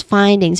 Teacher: find is the first syllable, which has a clear I diphthong sound and a clear D at the end. And the second syllable is ings.